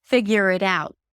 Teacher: The T at the end is just a held T or a very light T, so you don't have to overly pronounce it.